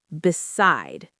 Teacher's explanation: Two syllables. The stress is on the second syllable.